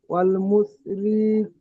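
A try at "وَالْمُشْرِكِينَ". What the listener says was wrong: একটু মোটা করে, আল মুশরিকিনা।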